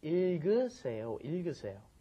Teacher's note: that last G gets moved up in front of the next vowel